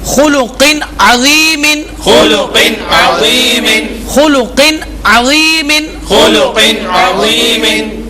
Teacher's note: یہاں پر تنوین کے بعد حروف حلقی میں سے عین آ رہا ہے، اس لیے یہاں پر اظہار کا قاعدہ ہوگا